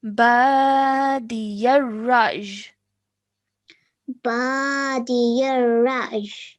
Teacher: so a slight y sound at the end